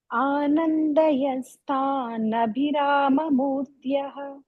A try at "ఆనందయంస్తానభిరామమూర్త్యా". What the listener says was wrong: అక్కడ ఆనందయం అన్న ఆనందయం అన్న అక్కడ ఆనందయన్ తాన్ రెండు కలిపితే ఆనందయం స్థాన్, పెదాలు చక్కగా మూసి అప్పుడు పలకాలి. కలిపేయండి. ఆనందయం స్థానభిరామమూర్త్యా.